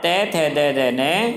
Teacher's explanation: इसके बाद त वर्ग के व्यंजन त थ द ध न हमारे दांतों से जीवा टकराती है, तब ध्वनि उत्पन्न होती है